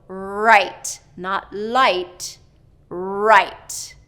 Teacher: tongue tip has to come down and the back of the tongue needs to be bunched up